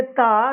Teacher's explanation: ये ता दंत व्यंजन के अंतर्गत आता है।